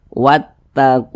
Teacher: Ada lafaz Allah, sebelumnya ada tanda baca dhammah atau tanda baca fathah, maka lafaz Allah tuh dibaca tebal, dibaca tafkhim